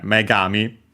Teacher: The accent is on the me itself for that.